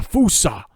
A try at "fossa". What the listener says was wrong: It's not Fusa. I don't care who you are. It's an O. It's not a U. Fowsuh.